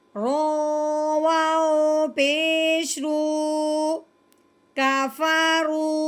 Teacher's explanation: واؤ ساکن سے پہلے پیش آ جائے تو اس حرف کو ایک الف کے برابر لمبا کرتے ہیں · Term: مد